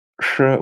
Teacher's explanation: it's a retroflex sound just like the uh the capital s it's neither s nor ash it's sure with the tongue curled back